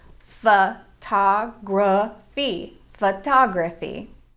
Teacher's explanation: photography actually has two schwa sounds in the first and third syllables